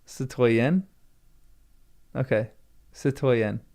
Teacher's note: Stress on the last syllable.